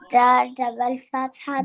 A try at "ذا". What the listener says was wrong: Then you are saying dal double fatha, dal double fatha. Zal fatha ذا, zal fatha ذا, zal fatha ذا.